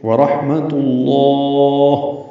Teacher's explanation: لام اسم جلالہ کا جو لام ہے وہ پر پڑھیں گے، لمبا کریں گے اور ہا ساکن پہ وقف کریں گے ، یہ مد عارض سکون بنے گی لام پر، بند وقفی